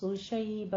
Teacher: शैबऊ में गुन्ना करना है, इदगाम मअल गुन्ना, इसको 2 काउंट करने हैं।